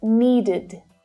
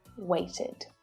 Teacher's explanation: So this is an unstressed vowel sound, and it creates an extra syllable, which is always unstressed. So the sound is short and it's low in pitch. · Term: id